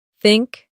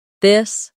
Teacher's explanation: For think it's soft. For this it's voiced. Let's try think this. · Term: th sound